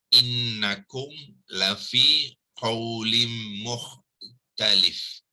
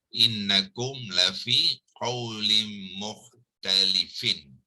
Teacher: Asalnya mukhtalifin, bila kita waqafkan kita akan sukunkan fa jadi mukhtalif.